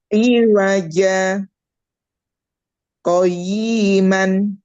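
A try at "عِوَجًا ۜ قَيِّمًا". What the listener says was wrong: Y-nya pendek. Iya, itu saktah atau tidak?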